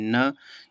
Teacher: नरम तालूस को नीचे होकर उत्पन्न किया जाता है और मुंह से जो है वायु निकलने का अवरोध होता है लेकिन नासिका से निकलने की छूट ना होती है वैसे को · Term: नासिक व्यंजन